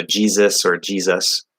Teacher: So Jesus or Jesus. So the first S is a Z sound. The second one is an S sound.